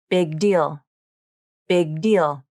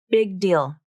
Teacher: It's not big deal with the released G, but big deal. The airflow is only released when you pronounce the next sound, the D in deal. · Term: unreleased consonant